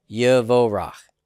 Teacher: I'm going to reject the Dagesh forte in the rush. The kibbutz becomes compensatorily long Holam.